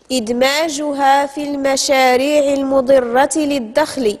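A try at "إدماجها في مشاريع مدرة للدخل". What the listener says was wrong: انتبهي، عاودي اقراي الجملة. ماشي في المشاريع، في مشاريع.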